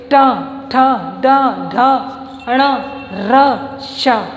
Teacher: बोलते समय हमारी जीव्या मूर्धा को टच करते हैं। आप स्पीक करके देखिए, ट ठ ड ढ अण र श। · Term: मूर्धन्य वर्ण